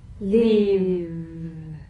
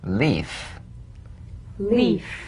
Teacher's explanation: if you don't have enough vibration in your V's they'll end up sounding like the F because they're exactly the same one has a vocal cord vibration